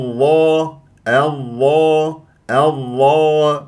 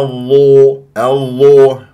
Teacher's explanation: الظا لان همزه وصل واللام الشمسيه بسبب مجي حرف مشدد بعدها والظاء مفخمه مرتبه اولى مفتوحه بعدها الف ولا لا يجري فيها النفس الظاء ليست من احرف فحثه شخص سكت لازم تخليها مركزه يعني